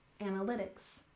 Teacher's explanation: the main stress here on the third syllable in analytics, analytics.